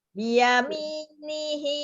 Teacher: Ianya nggak panjang. Biyami-nya yang panjang ya.